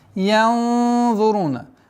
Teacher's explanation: Удержание назализации, твердой назализации ихфа в размере двух огласовок